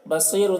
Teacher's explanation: صاد کو پر پڑھیں گے، صاد حروف مستعلیہ میں سے ہے. یہاں پر تنوین کے بعد با ہے، اس لیے تنوین کو میم سے بدل کے ساتھ پڑھیں گے، اس کو اقلاب کہتے ہیں.